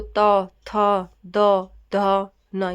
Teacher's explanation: त वर्ग यह बोला जाता है दंत से यानी दांतों से